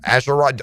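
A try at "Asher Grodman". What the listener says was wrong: Grodman with a G.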